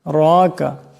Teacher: রার উপর খারা জবর আছে, এই রাকে মোটা আওয়াজে পড়তে হবে।